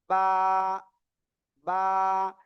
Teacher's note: দুই ঠোঁটের ভিজা অংশ থেকে এই অক্ষরটা এক আলিফটা নিয়ে উচ্চারণ করতে হয়